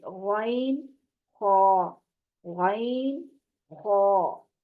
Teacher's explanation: زبان کے پچھلے حصے کو اوپر کی طرف بلند کرتے ہوئے ان دونوں حروف کو موٹی آواز میں پڑھیں گے. جب کوئی پر حروف ہوتا ہے پڑھا جاتا ہے تو اس کی دفعہ ہماری زبان کا جو پچھلا حصہ ہے اوپر تالو کی طرف اٹھ جاتا ہے، ٹھیک ہے، تو پھر آواز موٹی ہو جاتی ہے. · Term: ابتدائے حلق